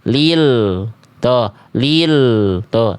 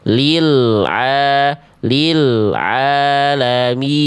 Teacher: Jadi biarkan suara L-nya itu mengalir dulu sedikit tanpa adanya bunyi penghujung vokal e. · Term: tawasut